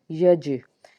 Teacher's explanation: या जीम ज़बर यज, जीम हरूफ़े क़लक़ला है, जब इसको अदा करेंगे आवाज़ लौट के आएगी